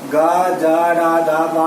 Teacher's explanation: గ జ డ ద బ అంటే మనకి ఇక్కడ నాదం గొంతు నుంచి పలికేటివి కాబట్టి ఇక నాదాలు అని కూడా అంటాం వీటిని. ఇవి సరళంగా పలుకుతాయి కాబట్టి గజడ దబల్లో అంటే తేలికగా పలుకుతాయి కాబట్టి సరళాలు అంటాం.